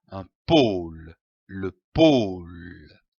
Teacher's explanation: L'association de ces deux syllabes donne le mot pôle, comme un pôle. Attention ici à l'accent circonflexe. On traîne le O.